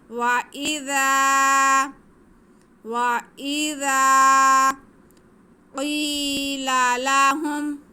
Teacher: قاف حروف مستعلیہ میں سے، اس کو ہم منہ بھر کے پڑھیں گے